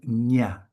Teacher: Now another new sound, a nasal sound, nya, which is a palatal sound. Palatal sounds are produced in the second phase from behind in our speech organ.